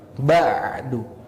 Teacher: jangan lupakan huruf ain, tekan ke bagian tengah tenggorokan kita. Ditandai dengan jakun yang ikut menekan ke dalam. Kalau jakunnya naik, ditekan berarti itu udah ain.